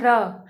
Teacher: जब हम र को बोलते हैं र, तो ये जीभ हमारी अग्रभाग को टच करती है और कंपन महसूस होता है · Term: लुंठित व्यंजन